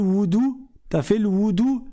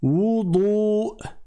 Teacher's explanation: C'est pas le woudou. Premièrement c'est un dad, c'est pas un del et secondement il y a une prolongation. Et troisièmement, il y a la hamz à la fin.